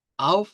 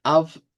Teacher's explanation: Si lo decimos con acento sureño, estaríamos diciendo out, pero si nos quedamos con alemán estándar tiene que ser av.